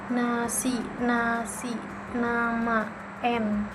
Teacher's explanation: Yang ke-10 ada n, bentuk mulutnya itu ujung lidah menyentuh alveolar ridge, udara keluar lewat hidung. Bunyinya itu bunyi hidung bersuara.